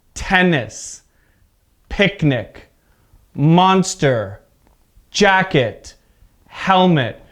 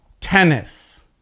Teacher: the stress is at the first part of the word